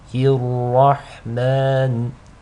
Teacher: The ra is heavy because it takes a fatha.